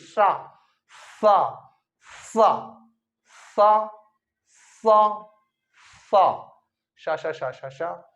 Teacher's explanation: वायु खतरनाक तरह से घिसाती हुई जाती है, दांतों के बीच से निकलती है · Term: उष्मीय व्यंजन